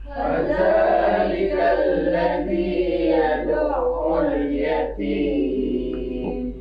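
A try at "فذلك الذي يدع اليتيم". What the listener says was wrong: Za bukan za ya. Ujung lidah, ujung gigi atas. Za. Fadza. Fadzalikal ladzi yad'ul yatim.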